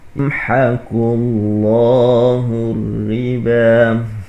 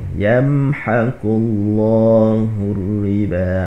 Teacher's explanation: Jadi biasanya dengung kita dengung dua harakat kalau hukum lain. Tapi apabila idhar syafawi ini kita tidak dengung.